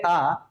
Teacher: तो पीछे वाला हिस्सा है ना, ना तो बीच वाले का ज्यादा प्रयोग है ना ही आगे वाले का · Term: पश्च स्वर